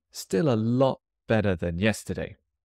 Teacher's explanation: I'm going to put a bit of stress on a lot.